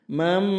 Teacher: suara nun sukun dibalik bunyinya menjadi suara mim, suara m. Mam dan ditahan 2-3 harakat. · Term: iqlab